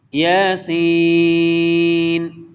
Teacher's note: یا کے اوپر کھڑی زبر ہے، اس کو تھوڑا شارٹ پڑھیں گے، اور سین کے اوپر بڑی مد ہے، اس کو زیادہ لمبا کریں گے